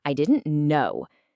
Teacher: If you're angry, maybe you get louder, and your pitch drops sharply.